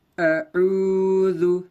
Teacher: واو ساکن سے پہلے عین پر پیش ہے، واو مدہ ہوگا. واو مدہ کو تھوڑا کھینچے اور معروف پڑھیں